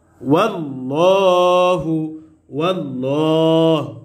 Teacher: কারণ এই আল্লাহর সাথে লামের পূর্বে জবর আসছে, আর আল্লাহর সাথে লামের পূর্বে জবর অথবা পেশ আসলে আল্লাহর সাথে লামকে পুর করে পড়তে হয়, অর্থাৎ মোটা করে পড়তে হয়।